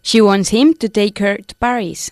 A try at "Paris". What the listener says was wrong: Paris is pronounced differently. We put the emphasis on the first syllable in English. Paris y no Paris, okay? Paris.